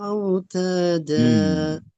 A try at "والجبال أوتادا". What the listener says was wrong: அந்த அவு அதான் மாறணும். ஆ இல்ல أوتاد أوتاد.